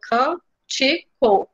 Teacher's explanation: E aí, percebam que o co aqui não é a sílaba forte, nem o ti é a sílaba forte. A gente diz mais forte o can. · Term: proparoxítona